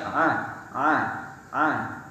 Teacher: sebagian besar permukaan lidah dan langit-langit terbuka atau tidak tidak bertemu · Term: infitah